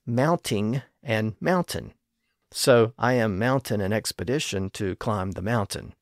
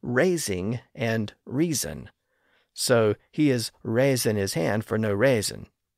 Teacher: people would routinely clip the end of those ing words in the late 1500s and early 1600s